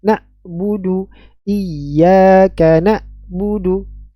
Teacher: membaca huruf Ain pada kata nabudu dibaca dengan huruf hamzah